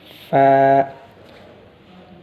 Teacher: होठों पर दांत रखकर ऐसा अदा करने से फ़ा निकलता